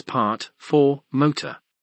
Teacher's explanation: pronunciation is rhotic, post-vocalic R, being pronounced in such words as part, for, motor